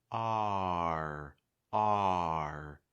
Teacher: Before you get to that sound where the back of your tongue is high and the front of your tongue is high, you want to make sure that ah sound comes in clearly enough where your mouth is wide and your tongue is low. R. A lot of students kind of rush through that first part and just kind of get to like but it's R.